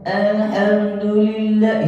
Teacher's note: Asudais itu baca suaranya bukan bass, suaranya lancip. Makanya dia bacanya Alhamdulillah, itu suaranya lancip, bukan suara bass.